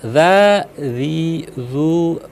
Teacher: Karena makhrajnya itu adalah ujung lidah disentuhkan dengan ujung gigi bagian atas ya. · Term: dzal